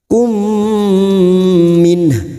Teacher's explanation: mim sukun bertemu mim idgham mimi siap masuk pada huruf mim berikutnya dan mendengung selama 2 atau 3 harakat